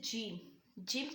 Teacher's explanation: वस्ते जुबान और बा मुकाबिल ऊपर का तालू यानी ऊपर का जो तालू है और जुबान का वस् जब